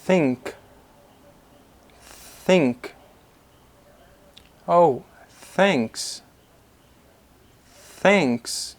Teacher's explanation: th sound is one dental fricative sound it means that you will produce this sound with your tongue between your teeth